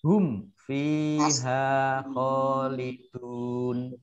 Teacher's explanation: Mim sukun bertemu dengan fa, idhar safawi dibaca jelas.